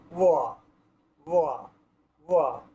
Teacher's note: এই বয়ের উচ্চারণ করতে হয় দাঁত এবং ঠোঁট এর মাঝখান মানে মধ্যবর্তী অবস্থান থেকে। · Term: অন্তস্থ ব